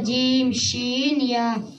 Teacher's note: 6 নম্বর মাখরাজ জিহ্বার মধ্যখান তার বরাবর উপরে তালুর সঙ্গে লাগাইয়া তিনটির উচ্চারিত হয় জিম শিন ইয়া।